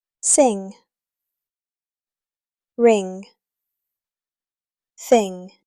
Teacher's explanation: Your tongue touches the back of your mouth. There is no hard G sound at the end.